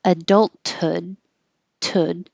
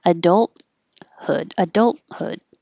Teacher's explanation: You can say the T, adulthood, tud, or not say the T, hold the T